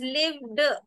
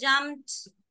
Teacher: lived has a voiced sound, okay, and jumped has unvoiced.